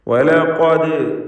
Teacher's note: ഈ പദത്തിൽ ഖാഫിനെ തഫ്ഖീം ചെയ്യണം, തടിപ്പിക്കണം.